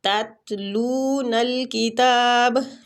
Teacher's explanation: ہیں نا، ہم لوگ تو ساکن کر رہے ہیں با کو، تو با پہ کلکلا کریں گے